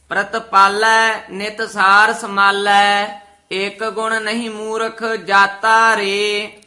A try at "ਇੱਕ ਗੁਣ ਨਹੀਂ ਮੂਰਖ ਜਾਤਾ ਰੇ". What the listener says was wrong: ਜਾਤਾ ਰੇ ਨਹੀਂ ਕਹਿਣਾ, ਇੱਕ ਗੁਣ ਨਹੀਂ ਮੂਰਖ ਜਾਤਾ ਰੇ। ਰੇ ਪਦ ਵੱਖਰੇ ਕਹਿਣੇ ਹਨ।